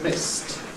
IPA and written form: mɪst (missed)